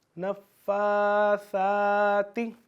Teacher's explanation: سا کو کوشش کرنی کہ آپ نے سین کی آواز نہ آئے